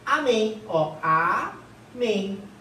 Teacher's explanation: Gente, a sílaba tônica aqui é a última.